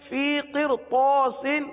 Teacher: را ساکن ہے، را ساکن کے آگے طا ہے، طا حروف مستعلیہ میں سے ہے، اس لیے را کو پر پڑھیں گے